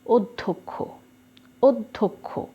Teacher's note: এখানে ধকার দিচ্ছি জ ফলার উচ্চারণ নেই কিন্তু ডবল করেছে এক্ষেত্রে একটু ব্যতিক্রম দুটো হচ্ছে না একটা দ হচ্ছে একটা দ